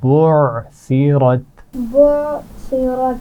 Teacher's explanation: عین کے مخرج پر آواز کو روکنا ہے